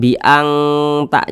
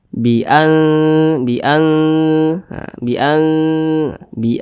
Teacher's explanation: cara membunyikannya itu disamarkan kemudian juga didengungkan akan tetapi dia lebih condong berbunyi n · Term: ikhfa Hakiki aqrab